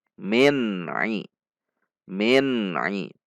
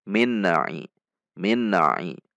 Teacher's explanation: harusnya tahan dititik Nun sampai mengucapkan Ai namun tidak boleh juga terlalu panjang karena ini bukan bacaan ghunnah tapi bacaan izhar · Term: izhar halqi